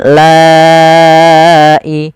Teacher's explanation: La awalnya 2 harokat, la karena adanya hamzah maka dia menjadi 4 harokat atau 5 harokat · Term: mad wajib muttasil